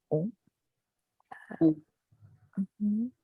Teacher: ONS, c'est juste on. Ça s'arrête avec le son nasal.